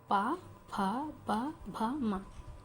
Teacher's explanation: और पा वर्ग को, ये जो 5 अक्षर है, इनको बच्चों जब हम दोनों लिप्स, हमारे जो दोनों होंठ आपस में जुड़ेंगे तब इन्हें बोला जाएगा। इनके आप अगर होंठ नहीं जोड़ पाएंगे तो इन अक्षरों को नहीं बोल पाएंगे।